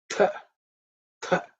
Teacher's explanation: This is second letter in the Tavarga, so it has to be aspirated.